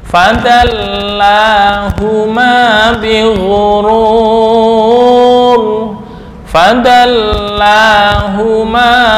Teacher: la panjang satu Alif